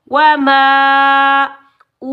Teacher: واو مدہ 1 الف کی مقدار میں کھینچ کر ادا کریں گے